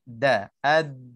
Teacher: Kita terasa kedudukan hujung lidah bahagian tepi lidah depan ni dia tersentuh dengan gigi atas. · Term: makhraj